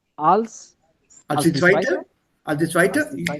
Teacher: your tone has to go up. It begins with a verb.